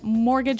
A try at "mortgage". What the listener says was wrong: Yeah, it has a T in it, but you don't pronounce it. You say mortgage. Mortgage. Not mortgage. Mortgage.